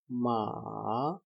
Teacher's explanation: Third tone dips low before rising again 2-1-4. Some people describe it as 2-1-1-4.